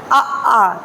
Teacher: तो हमारा मुंह ओपन होगा पूरा, अंदर से स्वर निकलेंगे